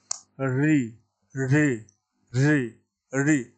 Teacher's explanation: री का उच्चारण हम मूर्धा से करते हैं, इसलिए इस वर्ण का नाम हो गया मूर्धन्य।